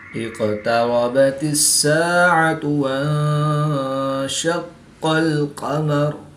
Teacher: قاف حرف مستعلیہ میں سے بھی ہے تو اس کو پورا یعنی موٹا پڑھیں گے، اور یہ حروف قلقلہ میں سے ہے۔